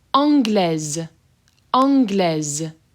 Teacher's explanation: you can hear that the S is being pronounced as a Z